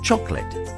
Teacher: Chocolate is a word with an elided syllable. That means we don't pronounce it.